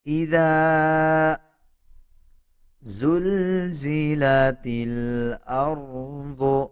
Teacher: یہ تا کے بعد جو الف ہے اس کو سکپ کر دیں گے، تا کو لام کے ساتھ ملا کے پڑھا جائے گا